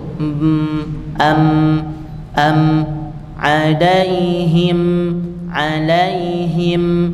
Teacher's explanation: kalau mim tidak usah dikuatkan kan tapi sekedar ditutup